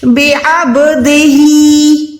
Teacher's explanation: بے عبدہی، اچھا یہ عین جو ہے الف نہیں ہے، عین ہے، عین بھی حلق کے بیچ میں سے ادا ہوگی